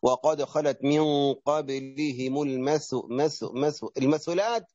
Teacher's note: الثاء المثلثة نظهر فيها اللسان